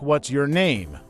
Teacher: for WH questions, like what's your name, the voice usually goes down at the end.